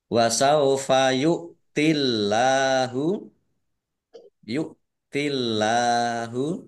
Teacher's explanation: Allahnya dibaca tipis karena harakat di depannya kasrh